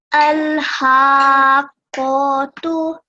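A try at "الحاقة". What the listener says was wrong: So remember 4 seconds, so a little bit longer on the ha. And also, what sign is above the qaf in the next letter?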